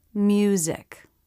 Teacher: in the word music, the Y sound goes with the U vowel to make a diphthong, rather than with the M consonant to make a consonant cluster. Music. To make the Y sound, the jaw drops a little bit. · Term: U as in few diphthong